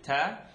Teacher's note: So ta is the tip of the tongue behind the top two teeth.